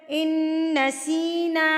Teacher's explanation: ان پہ غنہ ہوگا، نون مشدد ہے. ان نسینا، سیم وہی چھوٹی مد 3 حرکات کے برابر.